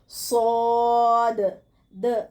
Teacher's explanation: سین اور صاد کا مخرج ایک ہے، صاد کو پر پڑھا جائے گا